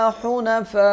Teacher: حنفاء پہ 5 الف کے برابر مد کریں گے